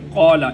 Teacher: یہ قال اس کے اندر قاف اس کو موٹا کر کے ادا کریں گے۔ موٹا قاف ادا کرنے کے لیے زبان کا جو درمیانی حصہ ہے اس کو اوپر والے تالو کے گلے کی طرف سب سے آخر والا جو حصہ ہے، نرم حصہ، وہاں پر لگائیں گے تو قاف ادا ہوگا۔